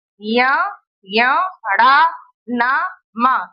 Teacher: मुंह के द्वारा ना निकल के नाक से निकलता है। मुंह में हवा रुक जाती है और नाक से हवा निकलती है। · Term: नासिक व्यंजन